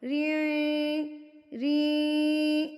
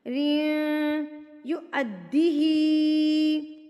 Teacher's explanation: بقیطاری, ناک میں آپ آواز لے گئے, ری ری, ادغام مع الغنہ, ناک میں آواز چلے گی